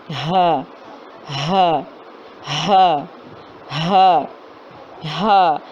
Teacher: ہا اس کا مخرج ہے حلق کے آخری سینے کے طرف والے حصے یعنی کہ اقصی حلق سے ادا ہوتا ہے